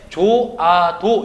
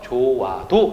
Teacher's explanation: 반모음 오가 결합이 돼서 아라고 하는 게 붙어서 와가 된 거죠